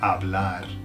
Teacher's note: Now, bear in mind that the H is silent. When words start with H in Spanish, they're silent, so it's hablar